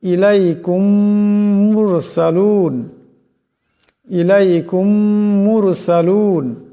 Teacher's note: মিম সাকিনের পরে যদি মিম আসে তবে এ মিম সাকিন কে পরের মিমের সাথে মিলাইয়া গুন্না করিয়া পড়তে হবে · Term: ইদগামে শাফা